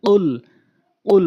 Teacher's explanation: কফটা জিহ্বার গোড়া থেকে উপরের তালুর সঙ্গে